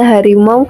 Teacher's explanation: bunyi aw pada kata harimau pada suku kata mau tidak dapat dipisahkan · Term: diftong